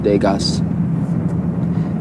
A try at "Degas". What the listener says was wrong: That's Degas. The S is silent.